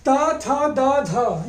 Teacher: ता, था, दा, धा, ये आपके क्या है? दंत से बोले जाते हैं।